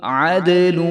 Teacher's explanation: دال بھی حروف قلقلہ ہے تو دال کے اوپر جزم ہے تو اس کو بھی جو ہے ہم ہلا کر پڑھیں گے